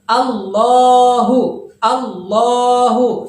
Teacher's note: cara bacanya harus dipanjangkan dua harokat